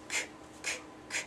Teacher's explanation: when you're saying the sound, you don't feel any vibration in your vocal cords. So you could put your hand on your throat and you can say that k, k, k sound, and you feel no vibration there in your vocal cords.